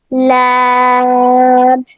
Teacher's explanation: लैम जुबान के किनारे ऊपर वाले दांतों के मसूड़ों पे जब लगेगा तो लैम अदा होगा।